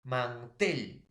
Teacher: La mayor fuerza de voz está en la E, en la tel